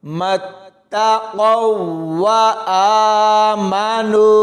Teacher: تو یہاں ساکن حرف سے پہلے اس قاف کو اس شد والی واو کے ساتھ ملائیں گے، قاف موٹا پڑھیں گے اور واو کے ساتھ ملاتے ہوئے سختی سے پڑھا جائے گا۔